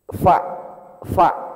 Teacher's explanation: Huruf fa itu satu bibir doang yang berperan. Bibir bawah bagian dalam ya ketemu dengan gigi atas.